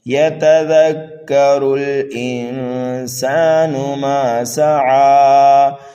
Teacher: انسان ما سعی، میم کے بعد الف مدہ ہے، کھینچ کر کے پڑھنا ہے میم کو۔ سین کو سینٹی کی آواز دینا ہے اور عین کو کھینچ کر کے پڑھنا ہے 1 الف کے برابر۔ یتذکر الانسان ما سعی، یہاں پر بھی وقف بالسکون ہوگا۔